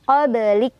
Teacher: Kaf ada hamznya ya, ada anginnya ya.